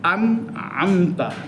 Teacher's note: এজহার মোটে গুন্না হবে না, স্পষ্ট থাকবে। এদগাম গুন্নাটা বেশি হয়, এই দুইটার মাঝামাঝি।